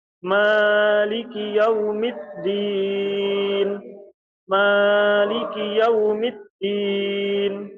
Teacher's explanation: Imam Haf itu ketika membaca Maliki yaumiddin itu adalah dengan dibaca satu alif atau dua harakat dipanjangkan bacaan maiki yaumiddin.